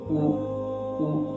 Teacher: آواز اور ہونٹوں کو گول کرنے سے پیش کی ادائیگی ہوتی ہے